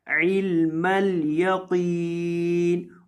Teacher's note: قوف کو موٹا کرنا ہے اور لمبا کر کے پڑھنا ہے کیونکہ قوف کے بعد یہاں یا مدہ آ رہی ہے، اس وجہ سے آپ نے یہاں قوف کو لمبا کر کے پڑھنا ہے.